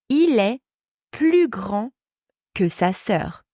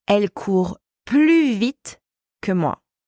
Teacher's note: So when the word plus is used in comparisons, so when you compare two things involving an adjective or an adverb, the S is always silent. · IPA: [ply]